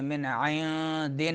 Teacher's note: मिन इंदिना, मिन में जो है नून साकिन के बाद आयन हरूफ हल्की में से आ रहा है तो इजहार होगा। फिर नून साकिन आ रहा है, उसके बाद दाल आ रहा है हरूफ इख्फा में से, तो नून को छुपाएंगे। मिन इंदिना इख्फा होगा।